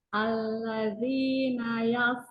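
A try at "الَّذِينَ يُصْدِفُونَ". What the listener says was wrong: Hilang ya. Ininya nggak kedengeran loh sama sekali hamsnya atau hilang ya suaranya. Nanti latihan di situ ya. Stop sukun tuh.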